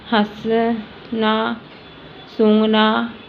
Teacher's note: जब इसका उच्चारण किया जाता है तो वायु नाक व मुख दोनों से निकलती है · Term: चंद्रबिंदु